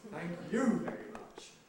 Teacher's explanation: much what's the structure of that thank you tail here because we have de-accented the repeated very much